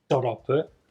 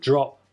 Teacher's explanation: You start in the d position, and then you don't move your tongue down, you slide it backwards.